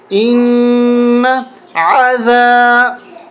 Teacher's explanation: الف زبر ذا، ذال پہ زبان کو باہر نکالیں گے، عذا، عین کو واضح اور ظاہر کر کے پڑھیں گے، حلق سے نکالیں گے